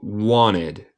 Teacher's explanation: Muchas veces en inglés americano estadounidense, cuando tenemos NT, quitamos el T y decimos wanted.